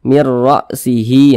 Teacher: Maka cara bacanya dimasukkan kemudian tidak didengungkan. Kalau idgham bil gunnah didengungkan, kalau idgham bila gunnah tidak didengungkan.